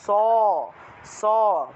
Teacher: এটা উচ্চারণটা হবে স, বাতাসটা এসে দাঁতের মধ্যে ধাক্কা লাগবে, এজন্য এটার নাম হয়েছে দন্তস্ব।